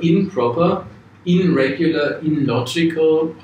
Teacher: Deswegen gibt es hier einen Anpassungsprozess, dass das N zu M wird, improper, oder sich direkt an den anderen Laut, irregular, illogical, anpasst.